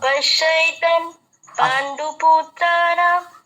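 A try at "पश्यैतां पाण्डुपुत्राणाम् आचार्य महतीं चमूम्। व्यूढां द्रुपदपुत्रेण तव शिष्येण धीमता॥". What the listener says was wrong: হ্যাঁ, অনেকটা এসে গেছে, হবে হবে, আপনারা পারবেন আমি জানি।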